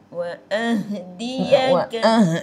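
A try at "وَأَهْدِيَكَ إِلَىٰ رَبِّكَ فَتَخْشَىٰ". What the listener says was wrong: Itu tak lepas, kena lepas kan. Wa itu pun tak lepas. Wa ahdiyaka Nak kena urut lah makcik. Nak bagi keluar suara tu bagi habis kan. Makcik kapit wa ahdiyaka ila. Yang tu kapit suara. Makcik kena buat keluar habis kan.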